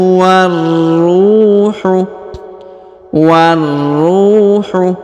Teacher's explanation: huruf ro ditahan dan ditekan · huruf ru diayun atau dipanjangkan dua harakat ya karena di depannya terdapat wau